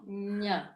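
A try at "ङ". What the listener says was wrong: ga. No, not a nya. That's different. That's the Enye one. Nga, nga. It's like you're swallowing your tongue or something back there.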